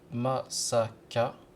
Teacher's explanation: Par exemple, masaka, prononcé masaka, l'accent est sur le ma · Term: accent tonique